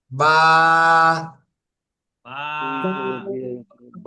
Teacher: উপরের ঠোঁটটা নিচের ঠোঁটের এই ভিজা জায়গায় লাগবে।